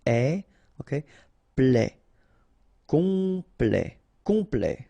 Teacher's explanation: here a T at the end will open it, the sound of the E